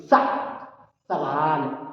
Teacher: सवाल वाले सा को दंत से बोलते